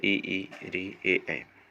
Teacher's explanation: जिन स्वरों के उच्चारण में जीभ का आगे का भाग काम करता है उन्हें अग्र स्वर कहते हैं